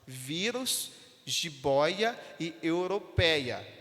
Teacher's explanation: é a penúltima sílaba que tem mais tonicidade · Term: paroxítona